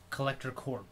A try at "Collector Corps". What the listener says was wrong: Collector Core. Yeah, P is silent.